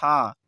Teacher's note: हा का उच्चारण स्थान है स्वर तंत्री जो हमारा स्वर तंत्र है इसके द्वारा हा का उच्चारण किया